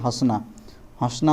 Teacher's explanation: तो इसको हम लोग क्या, चंद्रबिंदु भी कहते हैं, जिसका उच्चारण नाक, मुंह दोनों से किया जाता है। अगर हम लोग बोलेंगे तो इसका उच्चारण कहाँ से होता है, नाक और मुंह दोनों से होता है। तो ये क्या हो जाएगा हम लोग का अनुनासिक हो जाएगा।